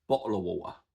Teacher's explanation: probably the most well-known feature of Cockney / Estuary is the glottal stop. And that is most obviously heard in the phrase bottle of water.